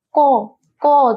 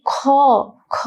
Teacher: ক বললে কি আমাদের ফুসফুস থেকে যে বাতাসটা বের হয় সেই বাতাসটা কি অল্প পরিমাণে বের হয়, কিন্তু আমরা খ বলছি তখন বাতাসটা কি বেশি পরিমাণে বের হয়। অর্থাৎ কি আমাদের বাতাস অর্থাৎ ফুসফুস তাড়িত যে বাতাস আছে সেই বাতাস কম পরিমাণে বের হবে নাকি বেশি পরিমাণে বের হবে সেটার উপর ভিত্তি করে কি ব্যঞ্জন বর্ণ কি কয় ভাগে ভাগ করা যায়, 2 ভাগে।